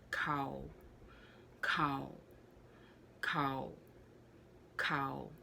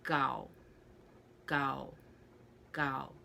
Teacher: so the k is a little bit aspirated if you take out the h and just have the k